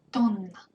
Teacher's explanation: Be sure to prolong N here, because it's double N, so we should prolong it.